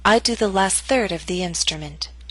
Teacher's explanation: Note that primary stress is in the middle of the statement. Your voice will continue to fall after the word third.